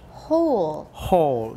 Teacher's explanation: vowel before l the o sound it's not hall it's hole